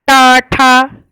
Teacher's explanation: फिर टा वर्ग टा ठा मूर्धा से, क्योंकि ये उल्टी हो जाती है जबान इसमें